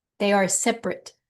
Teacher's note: Emphasis on the se, first syllable.